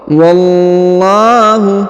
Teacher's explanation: huruf lamnya dibaca dipanjangkan Dua harakat wallahu ala huruf la dibaca panjang dua harakat karena terdapat Alif · huruf lamnya dibaca dipanjangkan 2 harokat